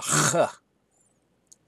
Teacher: So that is our chet. And the chet is pronounced in the throat.